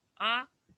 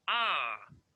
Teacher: el segundo a ese que parece que se eleva el tono y cae